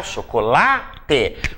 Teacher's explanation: Qual é a sílaba mais forte? A sílaba tônica é o lá. Última sílaba, penúltima sílaba, ela é uma palavra paroxítona.